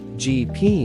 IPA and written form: ˌdʒiː ˈpi (GP)